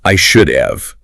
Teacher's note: it loses the H completely. It turns into UV. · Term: weak form